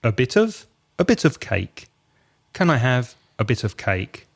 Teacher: Again, a and of, very weak.